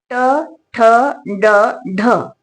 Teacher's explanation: या चार व्यंजनांचा आपण उच्चार केल्यानंतर आपली जीभ बरोबर या मुर्धेला लागते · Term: मूर्धन्य वर्ण